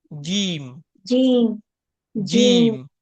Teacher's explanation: जीम का मखरज जबान के दरमियानी हिस्से यानी बीच जबान और हार्ड प्लेट मुंह की सख्त छत सख्त छत जो होती है ना हमारी ऊपर की मुंह की सख्त छत के दरमियान है। · جیم کا مخرج زبان کے درمیانی حصے اور ہارڈ پلیٹ